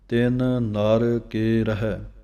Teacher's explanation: ਤਿੰਨ ਦਾ ਨੰਨਾ ਅਤੇ ਨਰ ਦਾ ਨੰਨਾ ਵੱਖਰਾ ਵੱਖਰਾ ਪੜ੍ਹਨਾ ਹੈ